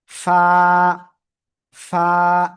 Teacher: এই যে নিচের ঠোঁটের পেট, উপরের দুই দাঁতের আগায় লাগাবেন, লাগিয়ে হালকা বাতাস বের করবেন, বের করে আপনার উচ্চারণ করতে হবে।